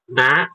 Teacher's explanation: ketika ibu baca huruf nun itu ada getaran di hidung